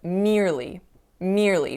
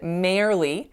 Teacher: instead of making the ear sound, I made an air sound. So I said merely instead of merely.